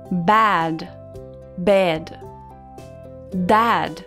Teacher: É uma mistura do A com E. Então não é A e também não é E. É uma mistura.